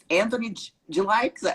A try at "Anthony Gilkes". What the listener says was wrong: So the promoters and the judges say Gilkes, but it's Gilkes. It's pronounced with a J, but spelled with a G. Anthony Gilkes.